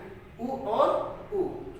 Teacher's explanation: उ और उ, छोटा उ और बड़ा उ, ये ओष्ठ से बोला जाता है